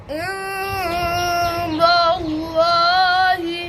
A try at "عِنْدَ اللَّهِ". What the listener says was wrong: दाल नहीं मोटी पढ़नी